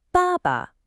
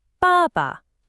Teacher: It's a falling fourth tone, followed by a light neutral tone.